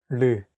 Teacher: It sounds like a mixture between an R and an L sound.